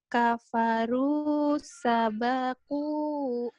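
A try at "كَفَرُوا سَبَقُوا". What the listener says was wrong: Pendek. Kafaru sabaku. Ulang.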